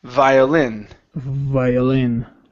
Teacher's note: the stress is at the end of the word violin